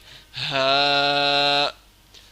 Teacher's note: ہا حروف حلقی میں سے ہے اور یہ ادنائے حلق سے ہے، یعنی سینے کے طرف سے، تو ہا کو اس طرح ہم ادا کریں گے سینے کی طرف سے، ہا۔